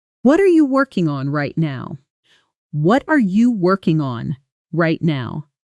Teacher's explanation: Notice the stress falls hard on working and lightly on the smaller connecting words like are and you. Those little words almost disappear. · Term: uneven stress pattern